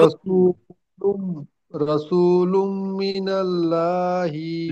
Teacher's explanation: লুম গুন্না হবে, মিম মুসাদ্দাদ একালিপ পরিমাণ গুন্না। আর আরেকটি হলো তানবিনের পরে লামের উপরে দুপেশ, তানবিনের পরে ইউমিনের চারটি হরফের মধ্যে মিম এসেছে, তাই একে ইদগামে নাকিস বলা হয়।